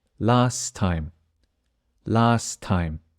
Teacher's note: the letter T at the end of last the T disappears